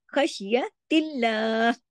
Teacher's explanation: ख्वा मोटा खराश के साथ, शीन को जमाओ के साथ · यहाँ पे लाम हल्का बारीक रखा जाएगा